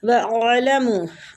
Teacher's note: आइन जो है साकिन है, इसकी हरकत कोई नहीं है, तो इसको सिर्फ हलक में लेके जाना है आवाज़ को